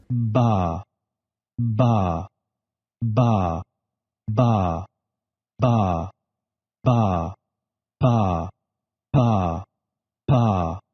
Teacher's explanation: For ba, the vocal cords vibrate before the release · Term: stop consonants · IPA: /ba/